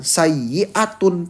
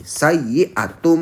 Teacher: Jadi nun sukunnya diganti dengan huruf ba karena ada nun sukun. Eh, nun sukunnya diganti dengan huruf mim karena ada nun sukun bertemu dengan huruf ba